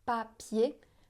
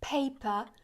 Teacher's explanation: Si on met la main devant la bouche, papier, on sent pas d'air. Alors qu'en anglais, si on dit paper, on sent l'air qui arrive sur la main. Donc avec le mot papier, vous pouvez vous entraîner à alléger un petit peu les sons de ces consonnes.